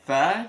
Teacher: Sanya ini yang huruf S itu dalam huruf hijaiyah ada 4, ada S-nya S Indonesia, S biasa, kemudian ada yang ini yang TS ya, tha, angin disaring antara dua gigi sama ujung lidah